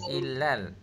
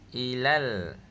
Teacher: Ah ikan ah ikan lam patah lam sukun jadi >> fatah lam sukun lal >> ha i l a l jadi apa >> illal ke ilal >> ilal ilal >> ha ilal saja bukan bukan illal nah sebab lam tu tak ada syadah >> kalau ada syadah baru kena tekan illal ha ni tak ada syadah jadi ilal saja